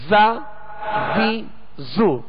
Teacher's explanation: زا زی زو، یعنی اس میں زیادہ جو ہے وہ زا زی اس قدر جو ہے وہ اس کے اندر سختی کہ جس میں تکلف پیدا ہو یہ درست نہیں ہے۔ بس آواز جو ہے اس کی سخت ہو، سیٹی جیسی آواز نکلے اور جو ہے آسانی کے ساتھ نکلے۔